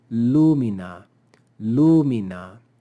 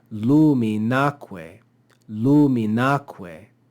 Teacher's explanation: So we would say lumina, lumina. But when we stick this enclitic onto it and say luminaque, we add an accent to the last syllable of the word.